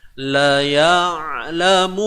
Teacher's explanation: Tengah kerongkong. Dia sama posisi. Sama point dengan huruf ha pedas. Yang mana ianya perlu juga disempitkan pada bahagian kerongkong. Huruf ain dan ha, dua huruf ini yang agak sukar disebut.